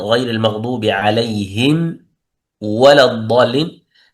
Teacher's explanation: يجب إظهار الميم الساكنة عند الفاء والواو، والحذر من الإخفاء